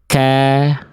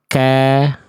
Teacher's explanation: ke langit-langit antara langit-langit yang lunak dan keras tuh perbatasan. Sehingga kalau kaf dia keluar percikan nafas. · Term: huruf kaf